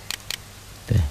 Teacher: Latarkabunna, gunnah, nunnya bersidah bertasydid.